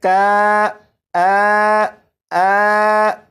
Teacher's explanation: کاف اور نون کے درمیان جو آواز ہے کا آ، یہ الف مخرج سے ادا ہو رہا ہے